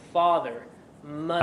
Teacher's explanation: with the American accent you hear those RS